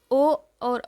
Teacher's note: ओ और ओ को हम कंठ और ओष्ठ दोनों से उच्चारित करते हैं। कंठ और ओष्ठ दोनों से उच्चारित करते हैं। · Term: कंठोष्ठ